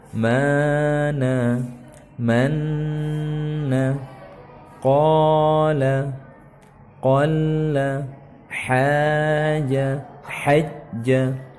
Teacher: Jadi madnya hilang. Jadi dari mada jadinya madda